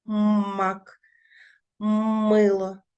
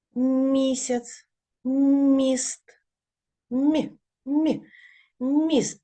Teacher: м може бути твердою ось в таких словах мак мило а може бути м'якою місяць міст